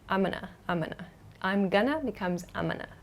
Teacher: And sometimes in fast speech, we drop the G sound.